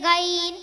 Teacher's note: गैन का मखरज अदनाए हलक यानी हलक का मुंह की तरफ वाला हिस्सा